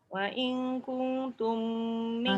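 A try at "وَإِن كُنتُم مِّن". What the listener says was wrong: Semua dengung. Wa in kuntum min banyak tu.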